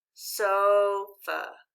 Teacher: the vowel a in the discovery words is pronounced uh